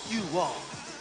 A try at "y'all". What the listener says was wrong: It ain't you all, it's y'all.